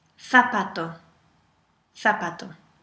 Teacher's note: And how do you pronounce the letter Z? As TH sound.